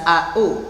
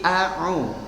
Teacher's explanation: Tidak au tapi a'u. Yang satu a hamzah, yang satu a ain.